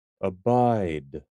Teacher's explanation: Emphasis on the second syllable.